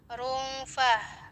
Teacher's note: Rungfah, di situ ro-nya tafkhim ya, karena dia masih berhubungan dengan dhammah, yaitu dhammatain, maka harus tebal.